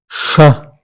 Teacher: The sound is produced when the front part of the tongue is raised close to the area just behind the alveolar ridge, near the hard palate. The air passes through a narrow space between the tongue and this region, creating friction and making sh, sound that is similar to the sound sheep in English language. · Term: palato-alveolar fricative